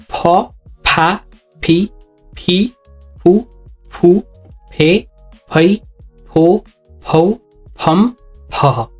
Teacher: the difference is you have to blow the air out that produces the sound PA